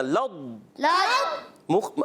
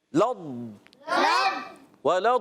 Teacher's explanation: کلکلا نہیں کرنا، لض. لض، اپنے مخرج میں آواز تھوڑی جاری رہتی ہے.